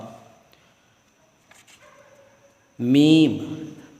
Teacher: میم، دونوں ہونٹوں کے خشک حصے سے ادا ہوتا ہے